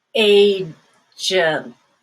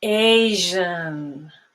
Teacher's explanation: the first one ends with a T, so there's going to be a stop at the end. Agent. The second one is Asian, and there's no stop whatsoever there.